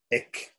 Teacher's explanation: That is called jihwa muliya. Jihwa muliya means pronounced at the root of the tongue. So the jihwa muliya is sometimes played in place of the visarga before ka and ka.